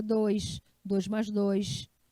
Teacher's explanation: O paraense chia, ele fala mais, ele fala 2, 2 mais 2.